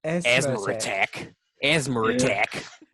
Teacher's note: So, I mean, just so long as you don't put a word that starts with a vowel after it, because when you do that, British people just decide, and New Zealanders for the record, just decide to put an R in there